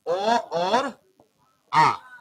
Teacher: कंठ में आता है ओ और आ यानी कंठ से उच्चारण इसका होता है